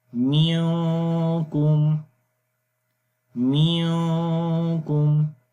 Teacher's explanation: نون کی آواز کو ہم نے چھپا کر پڑھنا ہے ناک کے اندر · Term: اخفا